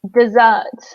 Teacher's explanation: so in dessert, we stress the second syllable,